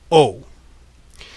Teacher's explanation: if you imagine bringing the tongue down a bit from the ooh you go down and you get this sound oh